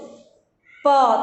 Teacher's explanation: प बोलने पे क्या होता है? दोनों ओठ जो है आपस में मिलते हैं, तो इसको हम ओष्ठ से बोलते हैं।